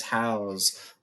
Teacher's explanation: I said house with that more of a Z sound instead of this S.